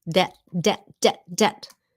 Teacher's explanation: Debt. You don't pronounce the B.